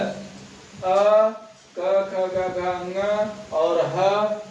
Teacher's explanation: ये बोले जाते हैं कंठ से। इनमें जीवा का कोई रोल नहीं होता, जीवा अपने स्थान पर रहती है और हम गले से आवाज निकालते हैं।